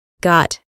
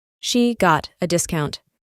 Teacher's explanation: La O se pronuncia aproximadamente como una A.